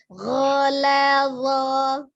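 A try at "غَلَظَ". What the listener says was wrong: Zo-nya ujung lidahnya keluar sedikit ya.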